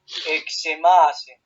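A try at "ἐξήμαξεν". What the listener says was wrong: Exemaxen. Toca volver a hacer la xi acá.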